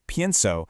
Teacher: In the forms inside the boot, like pienso, the stress naturally falls on the stem. That stress is what triggers the vowel change. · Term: syllable stress